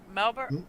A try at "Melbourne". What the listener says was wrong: You're not supposed to say the R. Melbourne